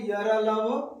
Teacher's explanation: ये अल्प प्राण मतलब इसको बोलने में कम हवा निकलती है मुह से